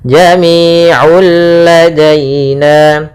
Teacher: Kemudian na'ul ladaina, pada lafal na'un ketemu dengan lam, maka hukumnya kembali lagi idgham bila gunnah, yaitu idgham artinya memasukkan tanwinnya kepada huruf lam. Bila gunnah artinya tidak disertai dengan gunnah sehingga langsung masuk ke lam dan tidak ditahan.